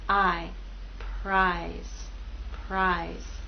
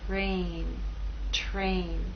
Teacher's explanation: here p is voiceless you will not feel vibration here again R will begin without vibration and then you'll add your voice